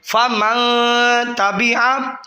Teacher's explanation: یہ دیکھیں نون پہ جزم آ گئی ہے فا من پہ، اس کے بعد تا آ گیا، تا حروف اخفا میں سے ہے تو اس لیے گننا کریں گے